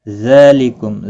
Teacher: वला तस्अमू अन तक्तुबूहु सगीरन औ कबीरन इला अजलिह ज़ालिकुम अक़सतु इंदल्लाहि व अक़वमु लिश्शहादह। ذالکم، ذال کے اوپر کھڑی زبر ہے، ایک الف کی مقدار کے برابر کھینچ کر پڑھیں گے